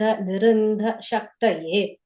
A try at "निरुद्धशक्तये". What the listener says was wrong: And the second line just before the comma, niruddha, in sound I heard, but there's no in sound, just niruddha shade.